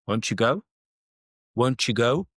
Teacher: a T and a Y when they blend, they become like a CH, a CH sound. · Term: assimilation